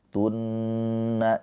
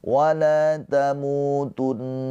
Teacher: Ghunah musyaddadah. Cara bacanya nunnya ini ditahan dua harakat. Tunna jangan buru-buru.